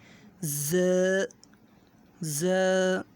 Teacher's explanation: ز میں سیٹی کی آواز نکلتی ہے، ز، ز، سین، سین، شین، شین، صاد۔